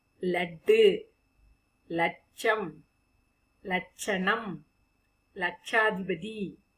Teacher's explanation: லகரம் மேல்கோட்டு லா உச்சரிக்கும் பொழுது நம்முடைய நாவானது அன்பல் கிட்ட தொடும். லட்டு, லட்சம், லட்சணம், லட்சாதிபதி, அப்படி நம்முடைய நாவானது அன்பல் அந்த இடத்தில் தொடும்.